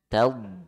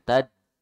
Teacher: Ya, jadi samping lidahnya tempelkan ke gigi geraham atas.